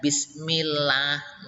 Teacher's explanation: kalau yang didahului kasrah itu tarqiq tipis